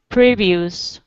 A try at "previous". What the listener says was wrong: Good.